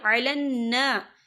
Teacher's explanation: یہاں نون مشدد ہے تو یہاں پر غنہ ہوگا، اور یہاں پر الف مدہ بھی ہو رہا ہے، خالف سے پہلے زبر ہے، تو ہم اسے 2 یا 3 حرکت کے برابر کھینچ کے پڑھیں گے۔